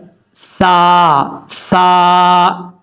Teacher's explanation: یہ جو سا ہے، سا بغیر سیٹی کے سب پڑھا جاتا ہے. سا، سا اس کا مخرج ہے زبان کا سرا اوپر والے دانتوں کے اندرونی کنارے سے لگے تو سا پڑھا جاتا ہے